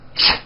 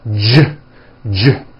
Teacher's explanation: if you take this CH sound and you keep everything in your mouth the same, you just add voicing, it becomes an American J sound. J, j. CH, ch, unvoiced, J voiced.